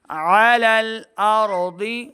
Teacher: حمزہ کی آواز نہیں بلکہ عین کی آواز آنی چاہیے